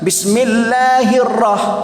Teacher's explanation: Ra sekali aja bergetar. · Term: takrir